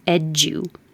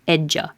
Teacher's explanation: a D and a Y next to each other are going to make a J, so edu. And then anytime you make a unstressed oo into an now you have ja, edja.